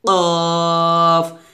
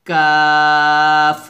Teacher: কাফ কিন্তু কফের মতো মোটা হবে না, কাফটা পাতলা হবে, কাফ, এভাবে।